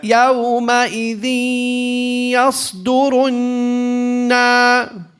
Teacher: So we hold for how many harakat? 2. With a nasalization. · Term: غنة